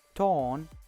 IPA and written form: tɔːn (torn)